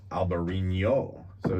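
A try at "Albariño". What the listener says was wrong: Enye. There's an Enye.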